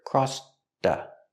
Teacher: We hear the T in crossed linked to the next word.